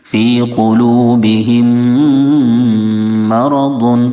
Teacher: میم ساکن کے بعد اگر دوسرا میم آ جائے تو ادغام شفوی ہوتا ہے. یہاں پر ایک الف کے برابر غنہ کریں گے، ناک میں آواز جائے گی